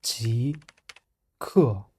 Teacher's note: 极(jí) is rising tone and 氪(kè) is falling tone, together极氪(jí kè)